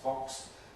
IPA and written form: fɒks (fox)